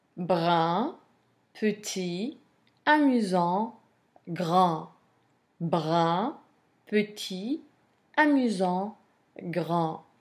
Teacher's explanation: These descriptives end in consonant, but the consonant is not pronounced, whereas in feminine they were pronounced.